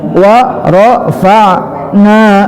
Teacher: Waro, waw huruf syafatain, ra, ya, tapi warafa, fa, warafa masuk ke ain, ya, wastal halqi, warafa'na, na mad tabi'i, hati-hati, ya. Wa rafa'na, na panjang 2 ketukan kena alif